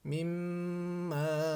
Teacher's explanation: itu ada tanda tasdid, artinya tasdid mim itu harus ditahan 2 harokat